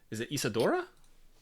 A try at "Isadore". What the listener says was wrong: Actually, yeah, be Isadore. It's spelled with the E.